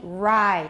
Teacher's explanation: It says that many speakers of English do not use these retroflex sounds at all, but some speakers begin words such as rye, row, ray with retroflex sounds. Note the position of the tip of your tongue on these words.